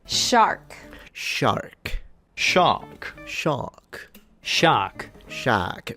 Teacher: her accent is rhotic and she does pronounce the R